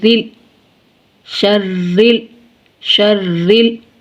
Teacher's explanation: را کے نیچے کسرہ ہے، را کو باریک پڑھیں گے